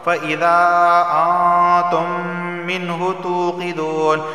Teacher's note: نون ساکن کے بعد تا آیا ہے اور تا حروف اخفا میں سے اخفا والا غنہ ہوگا